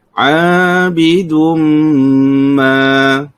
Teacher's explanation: Baik, kita lihat pada lafaz a, kita panjangkan sebanyak 2 harakat, ada hukum asli. Kemudian dum, Kita dengungkan kerana di situ ada hukum tajwid iaitu idgham ma'al gunnah. Kita panjangkan dengan kadar 2 harakat.